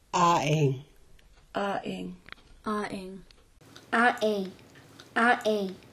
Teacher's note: The letter A in Klallam is usually slightly longer than the other vowels. It is pronounced like the vowel in the English word call.